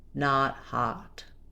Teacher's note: our a not hot is an open unrounded back vowel · our ah, not hot is an open, unrounded back vowel. By back vowels, we simply mean that there's space in the back of the mouth and the tongue is descending as we go. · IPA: /ɑ/